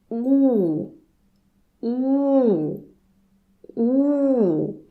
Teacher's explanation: your lips should be much more rounded than in English. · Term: Russian u